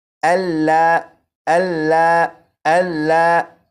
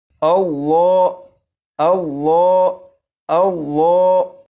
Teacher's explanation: لفظ اللہ کے لام کو پور یعنی موٹا پڑھیں گے